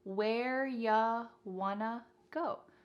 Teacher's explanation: You becomes ya, and want to becomes wanna.